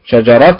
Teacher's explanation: شجره اين النبر على حركه الشين